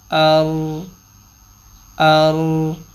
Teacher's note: را ساکن سے پہلے حرف پہ اگر زبر ہوگی تو را کی آواز کو موٹا کریں گے